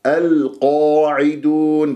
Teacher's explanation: أرفع أقصى اللسان وأنا ما أكور الشفاه، أضم الشفاه لأن هي مفتوحة أصلا تصفى عندي، ولازم أجيب التفخيم مرتبة أولى.